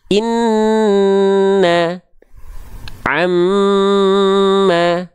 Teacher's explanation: Nun dan mim ketika bertasdid dia ditahan dua harakat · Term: ghunnah, gunnah